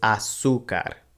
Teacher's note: The accent mark again tells us to put the stress over the zeta u syllable.